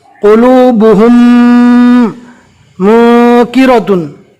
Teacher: मीम साकिन के इदगाम को मिलाकर गुन्ना के साथ पढ़ेंगे